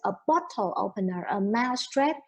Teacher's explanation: for the compound the stress is always under first syllable